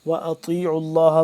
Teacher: طا کو موٹا کر کے پڑھیں گے